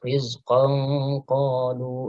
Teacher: Nah, ini kaidah ikhfa hakiki, ya. Karena qaf termasuk huruf isti'la, maka ikhfa hakikinya, ya, dibaca tafkhim atau dibaca tebal